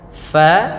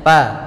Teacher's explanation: alirkan nafas fa-nya, fa, jangan kita baca dengan pa